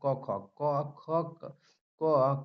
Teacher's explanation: क ख ग घ कंठ से बोला जाएगा